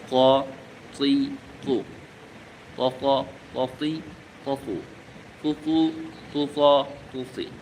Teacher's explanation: ক দাল তা একই জায়গা থেকে উচ্চারণ। কিন্তু ক একটু মোটা হরফ। একটু মোটা করে উচ্চারণ করতে হয়।